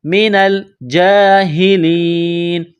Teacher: جیم کے اوپر کڑا زبر ہے، ایک الف کی لمٹ میں کھینچنا ہے